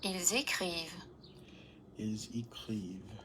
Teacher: There's always a voiced fricative for the plural verbs, huh?